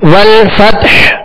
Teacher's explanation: آگے والفتح, والفتح یعنی ہا پر ہم نے سانس توڑ دیا، آواز اور سانس توڑ دیا اور وقف کیا ہم نے ہا کو ساکن کرنے، لہذا ہا پر ہی اختتام ہوگا، ہا ساکنہ پر آواز اور سانس کا اختتام ہوگا. والفتح یعنی آخر میں ظاہر کریں گے، ہا ساکن ظاہر کریں گے.